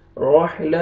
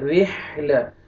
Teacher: रॉ को आपने बारीक करके पढ़ना है, रॉ का ये ज़ेर है, रोहिला नहीं पढ़ना है, रिहला।